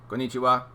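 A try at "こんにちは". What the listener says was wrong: Yes, it's all the same emphasis. Every syllable has the same emphasis. No getting excited. Konnichiwa.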